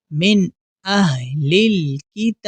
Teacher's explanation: یہاں الف مدہ ہے، الف مدہ کی پہچان یہ ہے کہ الف سے پہلے والے حرف پر زبر ہو تو ہم اسے الف مدہ کہتے ہیں، اور الف مدہ کو ہم ایک الف کے برابر کھینچ کر پڑھتے ہیں